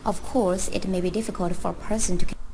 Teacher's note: she did have a rising intonation